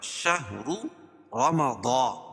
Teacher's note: شهر را پر پڑی جائے گی، کیوں؟ را کے اوپر پیش ہے · را کے اوپر پیش ہے، اور دوسری را بھی پر پڑی جائے گی، اس کے اوپر زبر ہے۔ شهر رمضان، ضاد کو پر پڑیں گے، ضاد حروف مستعلیہ میں سے ہے